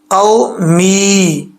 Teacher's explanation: واو ساکن سے پہلے زبر ہو تو واو لین ہوتا ہے، یعنی اس واو کو لمبا نہیں کریں گے